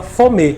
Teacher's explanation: ele muda a vogal em vez de ser a vogal I ele vai na vogal e